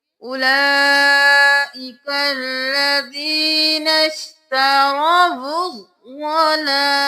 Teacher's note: واو کو ضاد کے ساتھ ملانا ہے، الف الف اور لام کو چھوڑ دینا ہے، یہ خالی ہے۔